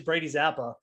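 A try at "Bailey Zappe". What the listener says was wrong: It's Bailey Zappi. It's Bailey. You keep calling him Brady.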